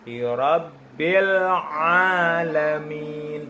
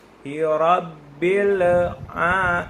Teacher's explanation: bil tidak boleh mantul, tapi langsung ke makhraj ain. Rabbil a, lidahnya tidak boleh lepas, langsung makhraj ainnya masuk.